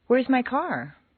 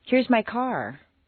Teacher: They do, but usually a question will step upward until the very end where it takes one quick little downward step. A question rises a little higher than a statement with the same intonation pattern. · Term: question intonation